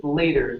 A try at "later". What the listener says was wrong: give me a flap T here instead of lat